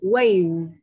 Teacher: Âm cuối cùng, hàm trên đặt xuống môi dưới và phát âm âm này của cô nhá.